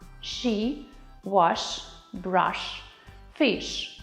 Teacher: Глухий звук подібний до українського ш у слові шина, але вимовляється м'якіше. Для цього потрібно підняти до твердого ньоба середню частину спинки язика.